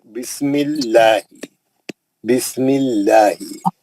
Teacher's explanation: जेर आएगा तो अल्लाह का नाम पतला पढ़ेंगे